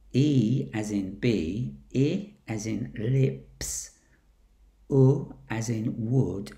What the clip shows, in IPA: iː as in biː ɪ as in lɪps ʊ as in wʊd